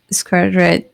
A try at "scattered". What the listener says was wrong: Scattered. you're adding an extra R sound here